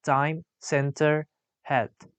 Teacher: t is voiceless alveolar stop.